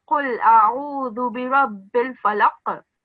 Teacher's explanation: whenever the qaf comes at the end of a word, you have to make a jerk sound, a shaking sound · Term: qalqala